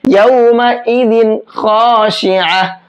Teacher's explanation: اس تنوین کی آواز کو صاف صاف پڑھیں گے، غنہ اخفا نہیں کریں گے۔ یومئذ خاشعہ، اور خا کو موٹا کر کے پر کر کے پڑھیں گے۔ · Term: اظہار